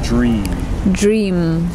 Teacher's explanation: Try and extend the nasal sound, dream.